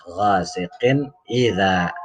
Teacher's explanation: izhar ini dibaca tanwinnya jelas